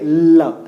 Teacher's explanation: सीधा नहीं निकलता है बल्कि बगल से निकलता है। इसी वजह से जब ल हम लोग बोलते हैं तो जो जीभ है वो ऊपर को टच करके वायु जो है दोनों बगल से निकल जाती है, ल इधर से जा रही है, ठीक है, गालों को टच करते हुए पीछे से निकलती है। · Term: पार्श्विक व्यंजन